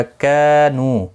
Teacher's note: کا الف مدہ ہے، ایک الف کی مقدار، نو واو مدہ ہے، دونوں کو ایک ایک الف کی مقدار کے برابر کھینچ کر پڑھیں گے